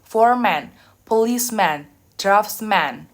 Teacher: the vowel in the second half of compound noun is reduced. For example, the word man it will be reduced in the compound noun.